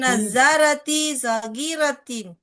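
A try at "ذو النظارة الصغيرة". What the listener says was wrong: Nggak boleh tanwin, ada alif lam juga. Zun nazaratis.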